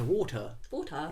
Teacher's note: We don't pronounce R's. It's just water.